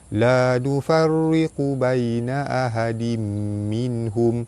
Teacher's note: La nufarriqu baina ahadim minhum, pada atas bertemu alif mad asli panjang 2 harakat. Ra baris bawah dibaca nipis. Pada atas bertemu ya di tengah kalimah, hukum dia mad lin.